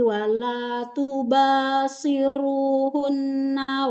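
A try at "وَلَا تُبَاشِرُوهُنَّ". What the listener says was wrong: Wala tubashiru. Huruf shinnya jangan seperti sin. Wala tubashiruhunna. shi.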